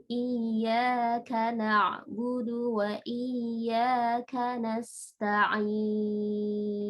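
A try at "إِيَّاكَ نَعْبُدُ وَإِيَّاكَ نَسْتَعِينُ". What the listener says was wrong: Ya, sinnya kurang Mbak, sofirnya nasta'in. Kadang-kadang kalau kita online itu sin itu enggak jelas. Tapi ya memang harus kita tambahin ya ketika kita online itu huruf-huruf sin, huruf-huruf yang hamas.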